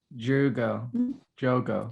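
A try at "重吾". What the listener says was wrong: It's more like Hugo, like with an H-ish. It's like Hugo. Hugo. That's just how they say it. That's how I've heard it been said.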